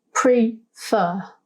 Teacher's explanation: this word out loud we notice it has two syllables prefer the emphasis when we say this word out loud is on the second sound fur